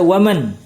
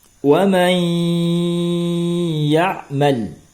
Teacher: Ya, karena hukumnya adalah idgham bi gunnah. Dibaca wa may dan disertai dengan dengung.